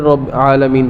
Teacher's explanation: با سخت حرف ہے, اس کی آواز بند ہو جاتی ہے, تو آواز بند ہوگی لیکن شد کا ٹھہراؤ اسی طرح رہے گا. ٹھہر کر پھر رب عالمین پڑھیں گے.